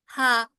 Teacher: हा सीने की तरफ से आएगा ना